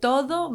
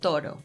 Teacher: The difference lies in the pronunciation of the D and the R sounds, the dental D in todo and the tap in toro